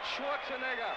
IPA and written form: ˈʃwɔrtsənɛɡər (Schwarzenegger)